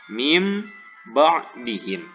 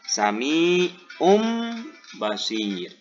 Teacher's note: Cara bacanya dengan merubah nun mati atau tanwin menjadi mim dan menggunakan pengucapan mim yang disamarkan selama 2 harokat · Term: iqlab